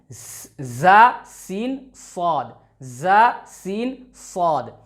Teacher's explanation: जुबान की नोक और सनाया उलिया और सुफला के सिरे का दरमियानी हिस्सा, ये सनाया उलिया और ये सनाया सुफला और इसके सिरे का दरमियानी हिस्सा, यानी कि ये जहाँ पे ये हाईलाइट हो रहा है ये दरमियानी हिस्सा है इनका।